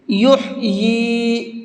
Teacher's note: ہا کو حلق سے نکال کر کے پڑھیں گے، اور یا کو تھوڑا سا کھینچ کر کے پڑھیں گے، اس لیے کہ یہاں پر کھڑا زیر ہے۔